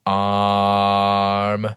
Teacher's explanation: it's not a dark a it's this bright ah